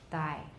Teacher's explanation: we do have a little burst when the stop is released but we don't have aspirations so it's a very tiny burst